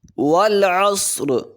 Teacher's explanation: واو پہ ہونٹ کو گول کریں گے، عین کو حلق سے ادا کریں گے، صاد کو موٹا بھی کریں گے اور سیٹی بھی نکالیں گے اس کی ادائیگی میں.